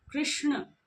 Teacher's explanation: तो इस प्रकार षट्कोण वाला श जो है उसका उच्चारण स्थान मूर्धा है। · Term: मूर्धन्य श